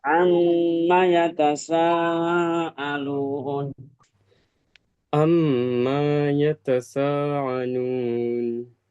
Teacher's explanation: enggak boleh panjang karena enggak ada alifnya